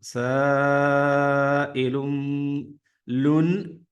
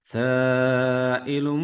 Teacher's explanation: തൻവീൻ ഉള്ള ലാമിന് ശേഷം ബാ ലെറ്റർ വന്നു കൊണ്ട് നമ്മൾ എന്ത് ചെയ്യും നൂനിന്റെ സൗണ്ട് നമ്മൾ മീമിന്റെ സൗണ്ട് ആക്കി മാറ്റും